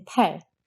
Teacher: aspirated p is in per which is much more aspirated